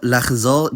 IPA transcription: laχˈzɔʁ̞